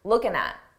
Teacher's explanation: What are you looking at? Here, it's very common to take a word that ends in ing and drop the G sound, that G sound, and just end it on looking at.